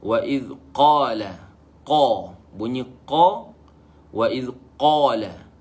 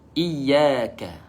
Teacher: kita baca qa dengan tebal